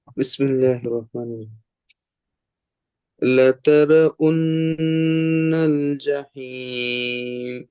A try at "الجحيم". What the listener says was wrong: বড় হা বের করেন, জাহিম, হি হি।